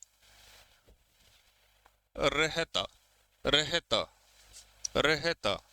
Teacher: तो रे बोलने में आपके जीभ ने कंपन किया रहता सही उच्चारण में रे बोलने में जीभ ने जो है वह कंपन किया जीभ को हमने लुढ़काया और यह एक इसकी संख्या एक होती है र को हम इस कैटेगरी में लेते हैं। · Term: लुंठित, लुंठित या प्रकंपित व्यंजन